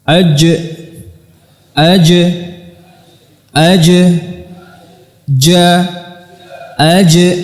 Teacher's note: dari tengah lidah bertemu dengan Tengah langit-langit atas atau di langit-langit keras